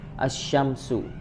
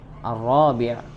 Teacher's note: dibacanya melebur ya. Maka alif lam itu tidak boleh nampak ketika pengucapan. Maka disamakan juga syamsiyah, asy-syamsu.